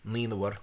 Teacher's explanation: There's an inserted vowel there between the sonorant RLN and a voiced fricative or stop. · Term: epenthetic vowel